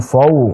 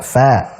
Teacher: Jangan fo, tapi fa. Dibuka. Fa. Tipis.